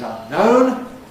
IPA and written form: ˌʌnˈnəʊn (unknown)